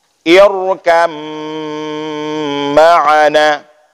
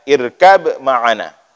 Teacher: Bagaimana idgham? Masukkan ba ke dalam mim, hilangkan ba.